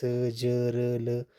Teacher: वतस्य हो गया दंत मूल से यानी कि स ज र ल, तो ये दंत मूल से जो है जिनका उच्चारण होता है उसे वतस्य कहते हैं।